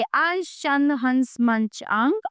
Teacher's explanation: अनुस्वार के उच्चारण में नाक से सांस अधिक निकलती है तथा मुख से कम